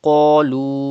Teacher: Pronounce qaf with thicker voice.